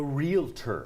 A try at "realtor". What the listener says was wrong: It's not a realtor. Realtor. Where's the extra E?